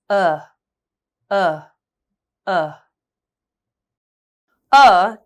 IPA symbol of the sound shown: ʌ